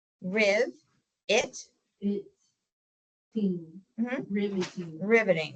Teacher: the next syllable is going to be that ET with a schwa there